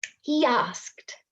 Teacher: So I'm not saying he asked me, I'm saying he asked. Secret Y goes in there. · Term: Intrusion